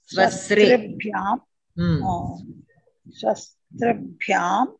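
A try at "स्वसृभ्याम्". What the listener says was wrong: ता लेदु तकारं लेदु मीरु तकारं पलकद्दु తకారం వస్తుంది మళ్ళీ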